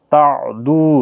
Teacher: دو واو مدہ ہے، ایک الف کی مقدار کے برابر کھینچیں گے۔